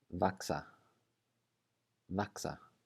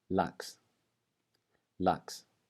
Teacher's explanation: it's going to be pronounced like a K with an S right after it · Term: letter X